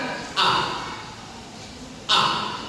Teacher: alif pada kata Allahu makhrajuhu minal khalqi, tempat keluarnya dari tenggorokan